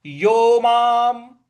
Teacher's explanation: ऊपर जो अनुस्वार है उसका उसका म ही उच्चारण ले आना है